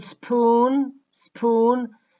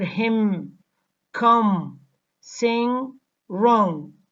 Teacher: nasal consonants affect the sounds that come before them and they make them nasalized